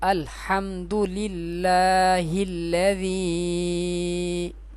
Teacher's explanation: اس لام کو باریک پڑھیں گے کیونکہ لام سے پہلے زیر ہے